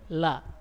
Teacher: membeloknya suara huruf dikarenakan tidak sempurnanya aliran suara yang mengalir akibat alirannya yang terhalangi oleh lidah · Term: sifat inhiraf